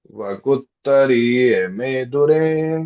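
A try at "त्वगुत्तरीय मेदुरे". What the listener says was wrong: देखिए एक्सीलेंट, बस वो र को आप लंबा लेंगे ना तो बराबर सही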